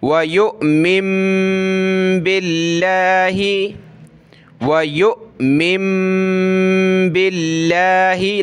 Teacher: وَيُؤْمِن بِاللَّهِ، دیکھیں آپ کو ہر ویڈیو میں بتایا کہ حمزہ کے اوپر یہ جزم، حمزہ ساکنہ جھٹکے کے ساتھ پڑھیں گے، اور آگے نون اس کے اوپر یہ جزم، نون ساکن کے بعد با آ جائے تو وہاں چھوٹی میم آ جاتی ہے، تو ہم نے اس چھوٹی میم کو بھی پڑھنا ہے ناک میں آواز پیدا کر کے